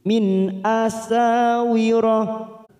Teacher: nun sukun bertemu hamzah, idhar halki. Kita baca jelas tanpa mendengung. Min asawira, sa fathah diikuti alif 2 harokat.